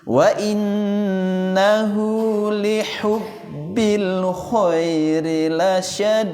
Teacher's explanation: Hati-hati di situ ya bukan lihu atau likhu ya. Huruf ha yang halus di posisi tengah tenggorokan.